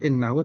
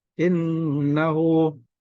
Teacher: ini gunna musyaddadah, dibaca 3 harokat. Ditahannya bukan innahu tapi innahu.